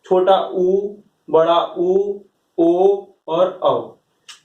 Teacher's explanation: व्रतमुखी का मतलब ये होता है कि जिन स्वरों के उच्चारण में हमारा मुख गोल वृत्त के समान हो जाता है उन स्वरों को हम लोग व्रतमुखी कहते हैं। व्रतमुखी के अंतर्गत 4 स्वर आते हैं, छोटा ऊ, बड़ा ऊ, ओ और औ।